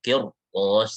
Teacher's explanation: Harus tebal, kirtos, seperti itu. Kenapa harus tebal? Karena setelahnya huruf isti'la.